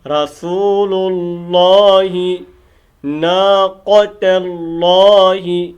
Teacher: فقال لهم رسول اللہ، یہ لام موٹا ہوگا لفظ اللہ کا، رسول اللہ ناقۃ اللہ، ٹھیک ہے، یہ قاف موٹا ہوگا اور تا بریک ہوگی، اور بعض قاف کو موٹا کرتے کرتے تا کو بھی موٹا کر دیتے ہیں، تو یہ غلط ہے۔